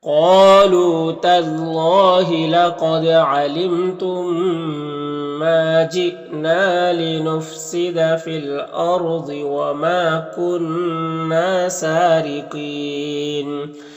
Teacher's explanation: کنہ میں نون مشدد ہے، غنہ ہوگا اور الف مدہ ہے. · را کے نیچے زیر ہے، را کو باریک پڑھیں گے.